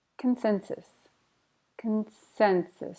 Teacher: Stress on the sin.